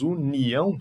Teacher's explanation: Mas quando falamos união, separamos união. O O sai mais fraquinho, ficam o A e o O na mesma sílaba. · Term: ditongo